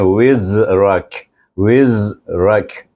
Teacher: tu lain Zal di sini nak baik sini bunyinya Wiz Wiz berdesirannya kuat seperti unggas bunyinya Wiz